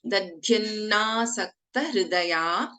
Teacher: So in Dadhyanna, the first letter is Alpaprana, second Dha is Mahaprana.